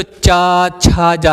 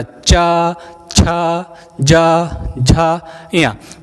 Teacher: चा वर्ग को बोलते हैं तो चा, छा, जा। आपकी जीभ का बीच वाला हिस्सा आपकी ऊपरी तालु के छत को टच करके नीचे आ रहा